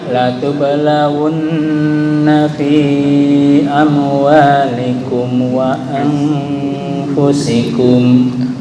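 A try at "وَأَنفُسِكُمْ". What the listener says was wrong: Untuk hamzah kayaknya tadi hampir condong ke ain ya, bukan wa anfusikum tapi wa bukan am, beda ya. Wa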